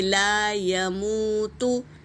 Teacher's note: لا، یا کے اوپر حرکت ہے، جلدی پڑھیں گے، لا یا۔ اور واو ساکن سے پہلے پیش ہے، واو مدہ، اسے کھینچیں گے ایک الف کے برابر۔